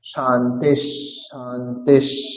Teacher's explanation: বিসর্গের পরে যেই স থাকবে, বিসর্গের উচ্চারণ সেই স এর মতো হবে।